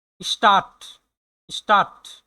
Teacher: এস এর পরে হচ্ছে একটা কনসোনেন্ট আছে টি, এই জন্য এটা উচ্চারণটা হবে শ এর মতো